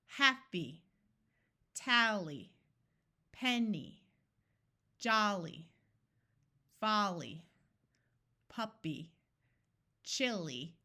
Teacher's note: the first syllable will be accented in these words